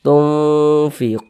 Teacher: karena dia didengungkan maka suaranya itu kita tahan kita panjangkan saja